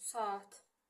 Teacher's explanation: Bu saitlərdən birincisi qalır, ikincisi düşür və uzun tələffüz olunur.